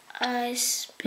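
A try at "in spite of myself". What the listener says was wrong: No, I didn't say I spit. No, there's no I. Where's I? You said I spit. That's not I spit.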